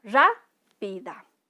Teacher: la palabra rápida, si se dan cuenta, tiene mayor entonación en ra. Sería una palabra así, sin contar lo que es mente, sería una palabra esdrújula, rápida, ¿ya?